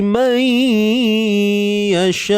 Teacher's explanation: Nun mati ke dalam ya. Nun mati ke dalam ya bi gunnah. Dengan dengung. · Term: Idgham bi gunnah